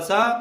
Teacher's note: ल और सिटी वाला स और त वर्ग पूरा ये दंत व्यंजन होते हैं।